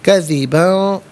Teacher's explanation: با پر دو زبر کی تنوین، اس کے بعد فا حرف اخفا آ رہا ہے تو تنوین کو اخفا کے ساتھ پڑھیں گے. اخفا کہتے ہیں ناک میں آواز لے جا کر گنگنانا.